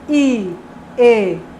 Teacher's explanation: Se eu digo I, E, a gente vê que a língua se desloca para a parte da frente da cavidade bucal, ou seja, a parte anterior.